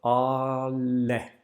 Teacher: we have an ah and then out of nowhere we go directly into the l we cut off the ah like with a knife we don't do something like switching the sound or twisting the